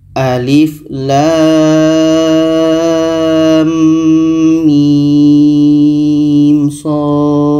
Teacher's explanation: di antara lam dengan mim ada dengung sebab idgham mislan